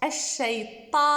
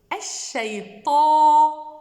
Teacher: Le alif va être emphatique, suivant la lettre qui vient juste avant. Ce alif-là, c'est un mad tabi'i, il va être prolongé de temps.